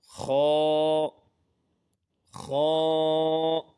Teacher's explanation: یہ حلق کے اوپر والے حصے سے ادا ہوگا